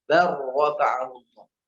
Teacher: Lamnya masukkan huruf ro langsung.